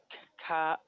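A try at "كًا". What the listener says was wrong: Kan. Kan. This is kan because kan. We have tanween here.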